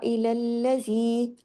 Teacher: إِلَى الَّذِي ڈبل ہوگا لام تشدید کی وجہ سے